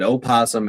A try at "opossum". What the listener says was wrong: No, opossum is not pronounced opossum. It's still pronounced possum. The O is silent.